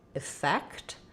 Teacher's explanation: the stress is on the fect syllable